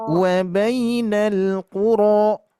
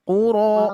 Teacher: Nah, kuronya 2 harokat Bu. Berarti tidak kuro terlalu panjang.